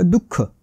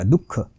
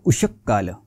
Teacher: विसर्गाचा उच्चार अर्धा, थोडक्यात ठसका लागल्यासारखा उच्चार करायचा